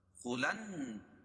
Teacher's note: ید دال پر قلقلہ، خلن خا لام کو نون میں ملائیں گے کیونکہ نون پر تشدید ہے، اور تشدید والا حرف دو مرتبہ پڑھا جاتا ہے، اور یہاں غنہ ہوگا